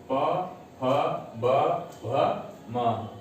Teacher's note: तो पूरा प वर्ग कहां से उच्चरित होगा? ओष्ठ से।